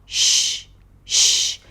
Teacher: To pronounce the 'sh' sound, the tongue goes up; it doesn't block the air, but comes up and almost touches the roof of the mouth; and the lips round a bit. And you need to release air.